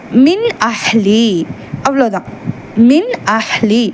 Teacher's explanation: அந்த நூன் அல்லது தன்வீனை குன்னா இல்லாமல் தெளிவாக ஓத வேண்டும் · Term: இல்ஹார்